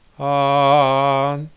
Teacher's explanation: tone one is high it's like a a singer singing high ah that's tone one toe number two is rising you might